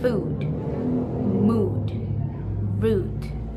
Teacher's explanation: First type, high back rounded vowels. So in American English, these sounds categorized as a short vowel, for example, as in the word food, mood, root.